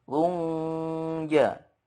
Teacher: Contoh ikhfa hakiki, fasabrun jamil. Runja harus ada gunnahnya